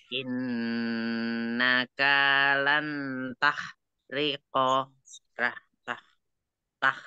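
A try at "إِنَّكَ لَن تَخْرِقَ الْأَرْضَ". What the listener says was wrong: Innakanya satu ketuk aja. Innaka lang tah.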